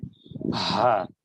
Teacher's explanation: এই হা টা হলকের মধ্যখান থেকে উচ্চারিত হচ্ছে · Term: বড় হা